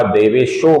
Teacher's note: देवेशः का जो विसर्ग है इसके आगे देवभृत गुरु का द आया हुआ है, इस कारण से इसका भी ओ बनता है, देवेशः का देवेशो बनता है।